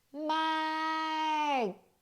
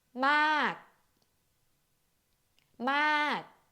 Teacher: you still pronounce it, but close the throat before you release the ending sound